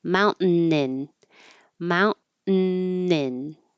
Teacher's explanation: now we're connecting the N to the word in.